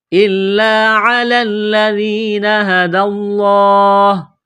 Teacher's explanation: گے، دال کو لام کے ساتھ ملائیں گے، پلس کریں گے، لفظ اللہ کے نام سے پہلے زبر ہے، لفظ اللہ کے نام کو موٹا کرنا ہے